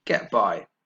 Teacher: those two words are are stressed equally